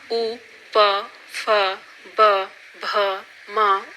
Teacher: उ, प, फ, ब, भ, म ओष्ठ ध्वनियां हैं